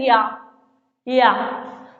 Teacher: या के उच्चारण में हमारा जो जीभ है हमारी वो सीधे तालु में जाके मिल रही है, कह रहे हैं या तो तुरंत जाके मिल रही है।